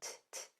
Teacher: T is voiceless. No vocal cords are used at all.